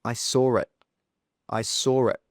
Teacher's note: with this one we add a r sound between the saw and the it.